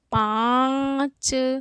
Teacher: नाक पर भी बल जा रहा है मुंह भी पूरा खुल रहा है ना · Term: अनुनासिक